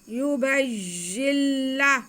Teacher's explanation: या पे पेश, बा पे ज़बर और आगे या मुशद्दद। बा का ज़बर हम या के साथ मिला लेंगे और फिर या के नीचे ज़ेर है और नून साकिन है, तो पहले इसे पढ़ लेते हैं।